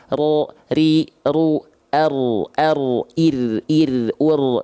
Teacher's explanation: ro dia punya sifat yang disebut dengan takrir War witakrin juil dia bergetar tapi tak terlampau berlebihan getarannya ro ri ru bahkan kalau dihitung-hitung hanya satu sampai dua getaran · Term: huruf ro